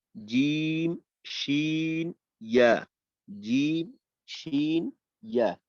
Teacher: ৬ number মাখরাজটা হলো জিহ্বার মধ্যখান তার বরাবর উপরে তালুর সঙ্গে লাগাইয়া উচ্চারিত হয়